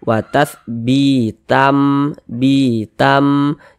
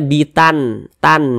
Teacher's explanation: Ini bunyi tanwin ini dimasukkan ke huruf mim, melebur dia ke huruf mim. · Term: idgham bhunah, idgham bi gunnah